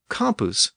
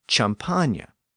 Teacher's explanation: That Latin root also passed into the French dialect of Paris, and by now we know what happened when words like campus passed into the speech of Paris. That K sound at the beginning turned into a CH sound.